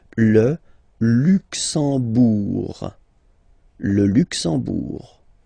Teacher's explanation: You don't pronounce the M at all, it's this nasal en